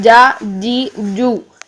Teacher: اس میں جیم میں جے والی ساؤنڈ رکھنی ہے، اس میں چے کی ساؤنڈ نہیں آنی چاہیے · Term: سختی والی ساؤنڈ